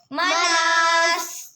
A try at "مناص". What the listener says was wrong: स्वाद बोलना है, सीन नहीं।